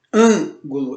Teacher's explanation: Esse an é a sílaba mais forte e então ela está na antepenúltima sílaba, então ela é uma proparoxítona.